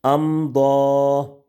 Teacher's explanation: اب میم ساکن کے بعد حرف با اور میم کے علاوہ حرف آ گئے تو یہاں پر غنہ نہیں ہوگا۔ امضا، میم ساکن کے بعد ضاد آ گئے تو یہاں پر بھی غنہ نہیں ہوگا، یہاں پر اظہار شفوی ہوگا